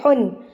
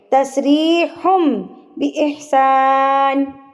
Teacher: یہاں پر اقلاب ہو رہا ہے تو اس میں ہم نے پڑھنا ہے ہم نہ کہ ہن. نون جو ہے نا وہ میم میں تبدیل ہو جائے گا, ہن نہیں پڑھنا, ہم پڑھیں گے